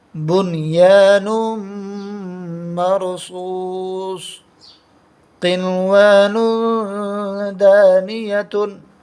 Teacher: یا کے تا کے اوپر دو پیش کی تنوین ہے، تنوین کی آواز کو تنوین کو ادا کرتے وقت نون ساکن کی جیسی آواز نکلتی ہے